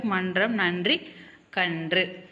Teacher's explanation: நாவின் நுனி மேல்வாய் அண்ணத்தின் முன்பகுதியை தொட்டால் ரன்னகரம்